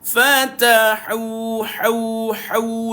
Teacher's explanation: Fa senyum, ta senyum, hau senyum. Tiga-tiga huruf ini huruf hams. Huruf hamas angin keluar. Fatahu, hau, hau, dipedaskan.